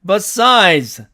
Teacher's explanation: 액센트가 있으니까 앞에 있는 이는 액센트를 뺏기니까 어로 발음이 되죠. 그래서 이렇게 어로 발음이 됐고 그 다음에 드와 즈는 조음점이 같습니다. · D나 DE 다음에 오는 S는 Z로 발음을 합니다. 자, 이 A번에 나오는 이 단어의 사전식 발음은 besides입니다.